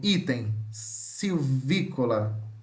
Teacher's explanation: a letra I é fechada, frontal, oral e não arredondada